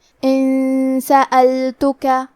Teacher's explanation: پھر حرف السین ہے کلمت سألتک. سین حروف الاخفاء میں سے ہے تو ہم یہ حکم کو غنہ کے ساتھ ادا کریں گے